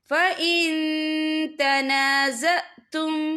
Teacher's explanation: या देखिए फ़इन, यह नून साकिन है, नून साकिन के बाद जो है ता आ रहा है, और ता जो है इक्फा का वर्ड है, तो हम यहाँ इक्फा करेंगे, नून साकिन की आवाज़ को नाक में छुपाएंगे